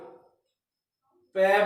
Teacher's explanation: दोनों अपने होठ है, लिप्स है, उनमें स्टॉपेज आ गया, फिर बाहर निकली